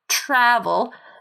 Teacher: But then you have travel, where the stress is on the first syllable